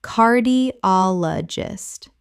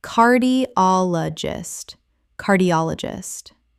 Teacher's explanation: The stress falls on the third syllable. Ol. Five syllables.